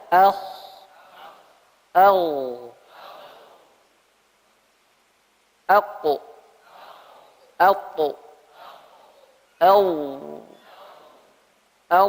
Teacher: Karena diarahkan ke atas, pangkal lidahnya naik. Efeknya, dampaknya suara jadi tebal.